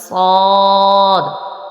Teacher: اس کے بعد ہے صاد، صاد جو ورڈ ہے یہ حروف مستعلیہ میں سے بھی ہے، اس کو تھوڑا موٹا بھی پڑھیں گے اور اس کا مخرج بھی سیٹی کے ساتھ ہی ادا ہوگا، یعنی اس کا مخرج زبان کی نوک اور دونوں دانتوں کے اندرونی کنارے سے۔